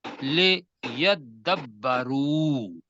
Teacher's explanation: تے دال کے اندر مدغم ہو گئی